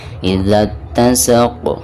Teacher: ketika diwakafkan maka di sini ada pantulan huruf qaf ya, karena huruf qaf ini merupakan salah satu daripada huruf qalqalah dan cara membacanya itu harus ada pantulannya. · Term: qalqalah kubro